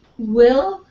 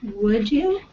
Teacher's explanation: these are what we call semivowels because it doesn't really stop the air flow right you've got W there's nothing really touching but your lips